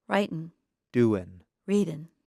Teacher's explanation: in fast speech many Americans do not pronounce the G at the end of the verb